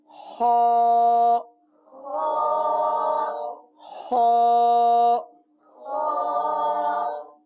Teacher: حرف خا یہ حلق کے اوپر والے حصے سے ادا ہوتا ہے۔ حلق کا جو اوپر والا حصہ ہے یہاں سے یہ حرف ادا ہوگا اور اس حرف کو پر ادا کریں گے۔